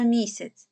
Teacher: куди падає наголос на перший склад тому саме перший склад буде в нас наголошений